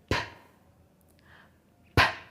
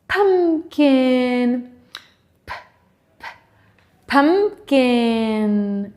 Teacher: my lips are pulled together first and then they are very quickly open to let all of the air out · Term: p sound